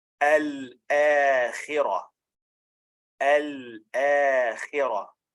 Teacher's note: You pronounce lam, then hamza, then an alif with a natural mad of 2 counts.